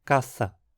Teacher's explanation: Assim, de caça, passamos a ter caça, uma fricativa dental. Foi um deslocamento pequeno, mas significativo.